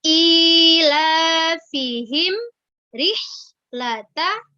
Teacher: tempat keluar di bagian bawah misalkan rihlata Guys jangan tapi Lata jadi hak yang tempat keluarnya di tenggorokan bagian tengah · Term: hak sukun